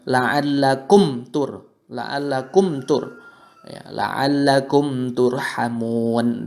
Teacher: Huruf mimnya ketika bertemu dengan ta maka kita baca jelas dalam bibir kita, tidak perlu disamarkan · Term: izhar syafawi